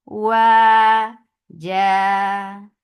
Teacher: circle your lips and make it 2 counts long